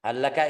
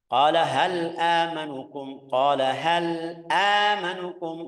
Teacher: hal laka idgham tapi hal amanukum izhar jelas